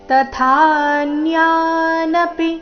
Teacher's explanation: ತ ಆದ ನಂತರ ಥ ಮಹಾಪ್ರಾಣ ದೀರ್ಘ